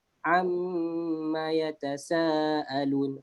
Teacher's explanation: Mim yang bersabdu kita perlu masukkan 2 harakat saja, jangan lebih. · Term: wajibul gunnah